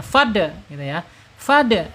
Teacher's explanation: Jadi dal ini mempunyai karakter yaitu tertahan suaranya ya.